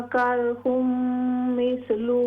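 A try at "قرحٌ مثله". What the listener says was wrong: काफ को और भी मोटा करें, करहुम मिस्लुह.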